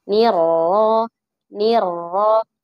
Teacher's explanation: Dan ro dalam kondisi fathah, maka kita harus membacanya dengan tebal ya.